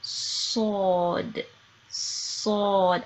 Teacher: I'm lifting my tongue it sounds kind of like a whistle